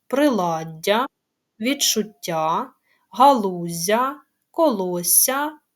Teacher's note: між двома голосними подовжені м'які приголосні